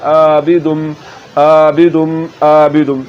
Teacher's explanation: عابدم، اور اگر آپ نے پڑھ دیا عابدم تو اب آپ حلق کے نیچے والے حصے سے آواز کو نکال رہے ہیں اور یہ حمزہ کی آواز ہے